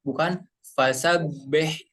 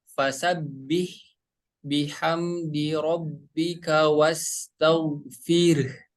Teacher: Huruf ba berharokat kasroh dibaca bi. Fasabih bukan lebih ke huruf E tapi lebih ke huruf I ya.